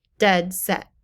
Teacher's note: two stress syllables in a row dead set you say both of those loudly